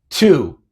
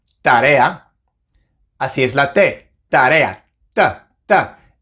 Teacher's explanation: En inglés, cuando pronunciamos la T, lo hacemos con un poco de aire, mientras que en español no.